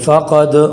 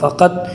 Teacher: دال ہے اور دال حروف قلقلہ میں سے ہے اور اس کے اوپر جزم بھی ہے، تو اس میں قلقلہ کر کے یوں پڑھیں گے